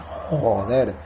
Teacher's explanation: Por ejemplo, la J española es muy atrás, ¿no? Cuando un español dice joder, la lengua se va muy atrás.